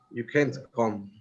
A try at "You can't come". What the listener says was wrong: But you're pronouncing the T. Stop the T before the explosion. You can't come. So the T is stopped before the explosion.